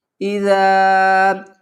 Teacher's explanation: اذا جاء نصر اللہ، حمزہ زیر ای زال کو نرمی سے ادا کریں گے، اور زال کے آگے الف ہے، یہ حروف مدہ میں سے ہے، اس کو 1 الف کی مقدار کھینچ کر پڑھیں گے